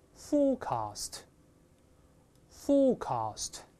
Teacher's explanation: 英式发音呢，前面发▁o，没有卷舌音 ，后面发▁r，大声那边，forecast，forecast。但美国人觉得这么读太古板、费劲